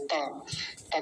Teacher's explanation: बोलने में एक गलती जो हो जाती है वो ये हो जाती है कि प्रतिष्ठित था बोल जाता है यहां था नहीं है ता है त त का प्रतिष्ठित ध्यान रखना है रतना भावी वारा मैं